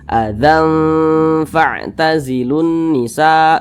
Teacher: jadi suaranya itu kita tahan kita panjangkan sejenak panjangnya itu adalah dua harakat nah panjangnya ghunah atau dengungannya itu adalah dua [Musik] harakatilunisa begitu